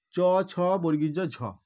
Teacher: দেখো জিভটা তালুর সঙ্গে স্পর্শ করছে, তালুর সাথে স্পর্শ করে এই বর্ণগুলো কিন্তু উচ্চারিত হচ্ছে। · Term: তালব্য ধ্বনি